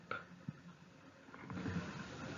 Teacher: En el sonido p no hay vibración, ¿no?, en la garganta, no hay vibración en la garganta.